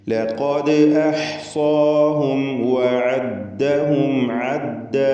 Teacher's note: അന്ത്യത്തിൽ വന്ന സാക്കിനത്തായ മീമിൻ ഇൽഹാർ ഷഫവി നൽകി മണിക്കാതെ വെളിവാക്കണം. ശേഷം വാവ് വന്നതുകൊണ്ട് സൂക്ഷ്മതയോടെ ഇൽഹാർ ചെയ്യണം.